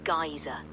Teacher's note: The word is pronounced geyser, with the emphasis on the first syllable